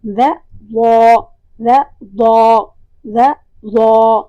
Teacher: دوسرا جو آسان طریقہ ہے کہ آپ نے دال ادا کیا، ذ، اسی کو آپ نے موٹا کرنا ہے، ذ ضا، ذ ضا، ذ ضا۔ جب موٹا کریں گے تو یہ ضا بن جائے گا